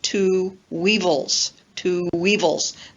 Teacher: notice the W that is linking the two words, two and evil. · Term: W glide